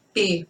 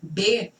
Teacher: o P e o B, ele tem o mesmo ponto articulatório. Então, todos dois bilabiais. A gente faz P, B, só que um vibra e o outro não.